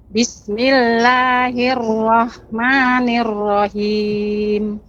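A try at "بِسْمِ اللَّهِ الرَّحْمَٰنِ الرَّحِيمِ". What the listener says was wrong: Hanya lebih dikecilkan, Bu. Pengucapan huruf ha. Rahim. Bismillahirrahmanirrahim.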